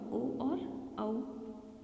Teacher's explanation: इसके अलावा ओ और औ, कंठ ओष्ठ यानी कि होठों का भी सहारा लेना पड़ता है, इसके साथ ही कंठ से भी आवाज़ निकलती है, इसलिए इन्हें कंठोष्ठ ध्वनियाँ कहते हैं।